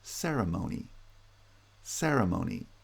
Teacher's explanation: ceremony is stressed on the first and third syllables, ceremony, with primary stress on the first syllable, ceremony.